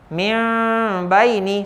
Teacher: Semuanya akan menukarkan bunyi nun, min tu, kepada bunyi huruf mim, kepada bunyi huruf M, ya, huruf M. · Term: iqlab